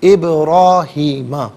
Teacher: ابراہیم میں با ساکن ہوگا لیکن با حرف قلقلہ ہے تو آواز لوٹتی ہوئی محسوس ہونی چاہیے، ابراہیم نہیں، ابراہیم۔